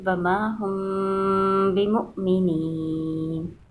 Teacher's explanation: جب میم ساکن کے آگے با آ جائے گا تو ادغام شفوی کرتے ہیں، یعنی ہونٹوں کو دبا کے اور با کو سختی سے پڑھتے ہیں۔